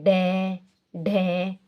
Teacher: जीभ अचानक से गिर रही है और फिर अंदर से आवाज निकल रही है। जैसे जीभ गिरती है अचानक से कोई शब्द बाहर आ जाता है तो उसको क्या बोलते हैं, उत्क्षिप्त, यानी फेंका हुआ शब्द, अचानक से फेंक दिया, जैसे ढे ढे हो गया।